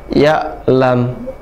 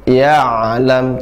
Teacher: Nah, dibedakan. Kalau ya'lam hamzah suara terputus. Tapi kalau ain ya'lam suaranya pertengahan. Jadi ditekan ya'lam, tidak ya'lam tapi ya'lam.